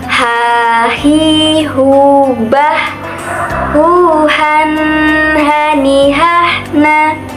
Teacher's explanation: Dalam melafalkan huruf A ini, kita harus mengeluarkan suaranya dari tengah tenggorokan. Ketika dilafalkan persis ketika kita melafalkan kata ayah.